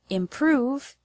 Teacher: the word improve has the stress on the second syllable